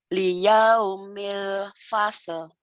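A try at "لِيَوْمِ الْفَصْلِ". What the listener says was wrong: Liyaumil fasal, bukan pasal gitu ya, parcel. Fasal. Sod kan fasal. Sod kan bukan pasal. Fasal. Iya, liyaumil fasal.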